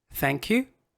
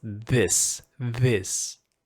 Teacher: same gestures same um places but different voicing